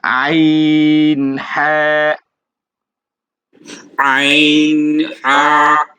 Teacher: একটা হচ্ছে কণ্ঠনালীর শুরু থেকে, আর আরেকটা হচ্ছে কণ্ঠনালীর মধ্যভাগ থেকে, মানে গলার মাঝখান থেকে আইন হা উচ্চারিত হবে